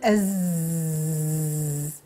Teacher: الدليل، حط يدك على الحنجرة وقول أز، غتسمع بواحد، غتحس بواحد الاهتزاز كاينه في الحنجرة ديالك. إذن صوت الزاي صوت مجهور